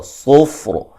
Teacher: صاد کو موٹا ادا کریں گے, را کو بھی موٹا ادا کریں گے, وقفاً وصلاً, ٹھیک ہے.